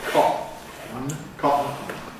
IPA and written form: ˈkɒʔn̩ (cotton)